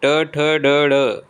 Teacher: जाएगा स्वर घोष ध्वनियां होती हैं मूर्धन्य ध्वनियां कौन सी है मूर्धन्य ध्वनियां है ट वर्ग